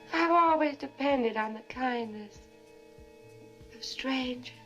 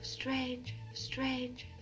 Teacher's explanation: hear how there's no R in strangers